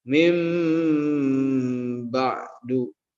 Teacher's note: Nah, ya kan, asal katanya min ba'du, tetapi karena nun sukun ketemu ba, maka nunnya itu berubah menjadi huruf mim, huruf m. Mim ba'du. Ada dengungnya mim, ada samarnya mim ba'du. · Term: iklab